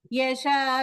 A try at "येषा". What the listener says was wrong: येषा ये வந்து தீர்க்கம்.